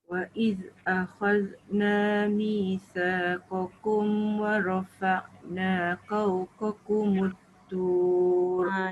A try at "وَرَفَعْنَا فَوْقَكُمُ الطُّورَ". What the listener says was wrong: Cuma dia tertukar huruf je. Fau bukan kau. Wa rafa'na fawqakumut tur. Fau.